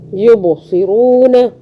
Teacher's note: با پہ پھر قلقلہ آ رہا ہے, با پہ چٹکی سے پڑھنا